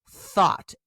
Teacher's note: T-H-O-U-G-H-T is pronounced thought. The TH is unvoiced. Thought, and it rhymes with caught.